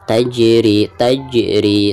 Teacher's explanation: hukum Qolqolah Sugro ya cara membacanya itu harus ada pantulan